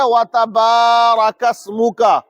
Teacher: با کو کھینچنا ہے کیونکہ با کے بعد میں الف آ جاتا ہے نا، اور الف سے پہلے زبر آئے تو پھر وہ کھینچا جائے گا.